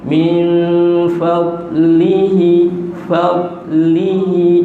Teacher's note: huruf dad min fadlihi, jangan fadlihi, dia bukan huruf qalqalah, tahan. Min fadlihi, fadlihi, jaga di situ.